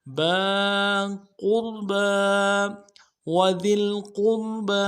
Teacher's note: ذال کو باریک کرنا ہے اور لام کے ساتھ ملائیں گے، قاف کو موٹا ادا کریں گے اور را کے ساتھ ملانا ہے، را کو موٹا کریں گے ، با کے ساتھ با کے اوپر الف کھڑا زبر ہے، · با کے اوپر الف کھڑا زبر ہے، ایک الف دال میں کھینچیں گے